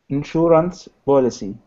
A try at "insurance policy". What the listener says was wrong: I was kind of hearing policy with a B. I would like to hear policy with a P.